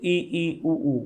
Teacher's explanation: मुंह जो है ना वो 1/4 ही खुल रहा है, थोड़ा सा ही खुल रहा है, इसलिए ये संवृत्त है